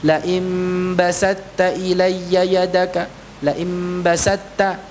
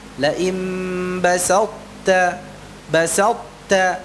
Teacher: masih tersisa sifat huruf ta-nya, sifat itbaqnya